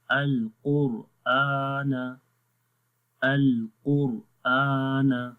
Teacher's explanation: را کے اوپر ساکن ہے اور اس سے پہلے والے حرف کے اوپر پیش ہے، تو اس حالت میں بھی را کو موٹا پڑھیں گے